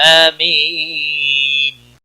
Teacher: امین یا مدہ ہے ایک الف کے برابر کھینچ کر پڑھیں گے